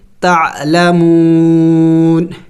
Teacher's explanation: وقف میں اس نون کو سائلنٹ کریں گے یعنی ساکن کر دیں گے، تعلمون، لیکن آخر میں نون کی آواز نکلنی چاہیے